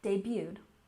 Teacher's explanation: we have a tricky French word here that's commonly used in American English you don't say the T